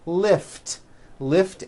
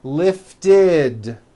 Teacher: if a word ends in a t or a D sound we add the ending ID which is a vowel I followed by a d which is voiced